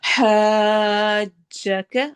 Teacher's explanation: ہا کو لمبا کرتے ہوئے جیم سے ملانا ہے اور پھر پڑھنا ہے